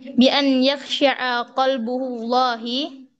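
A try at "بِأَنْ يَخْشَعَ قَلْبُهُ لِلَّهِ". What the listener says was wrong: لله. Nah, lillah. Tidak ada hamzah wasalnya kan?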